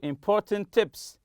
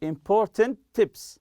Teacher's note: we'll give you important tips as if it's just one t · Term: linking